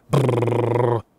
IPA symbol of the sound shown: ʙ